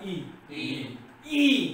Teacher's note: पहिला ई हा सहज झाला म्हणून हा ऱ्हस्व झाला, तर दुसरा ई हा दीर्घ झाला